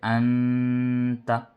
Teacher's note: نون ساکن کے بعد حروف اخفا میں سے تا آیا تو نون کی آواز کو ناک میں چھپا کر پڑھ رہے ہیں